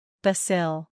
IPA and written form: ˌbæs əˈli (bacille)